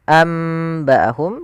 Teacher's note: Ini pengulangan saja yaitu suara nunnya diganti dengan mim